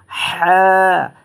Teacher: এই হা হরফটা উচ্চারণ হয় আপনার গলার মধ্যখান মাঝখান থেকে